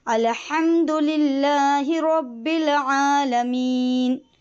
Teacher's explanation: بڑی ہاں، حلق سے ادا کریں گے